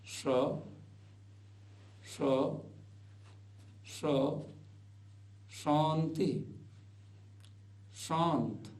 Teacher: जिवा को तालू के पास ले जाकर के इसको बोला जाता है